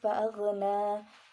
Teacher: Pada lafaz fa'aghna nanya itu mad asli atau mad tabi'i, panjangnya yaitu 2 harokat